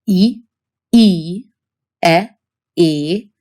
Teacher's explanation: the front unrounded category where your lips are not rounded